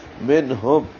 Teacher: نون ساکن پہ اظہار ہے، ہا اقصى حلق سے، اور میم ساکن پہ بھی اظہار ہے